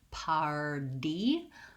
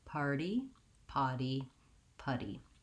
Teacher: we don't say the clear T with the release of air. We say these as a flap. It sounds more like a light D.